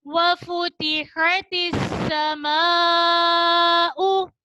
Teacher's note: वफुतिहतिस समाउ. हा को वसत हलक यानी हलक के दरमियानी हिस्से से अदा कीजिए. सीन में सीटी आएगी और यहाँ बड़ी मद का कायदा हो रहा है.